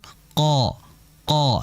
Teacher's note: Qo qo tidak. Yang betul qo dengan mengangkat pangkal lidah saja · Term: qof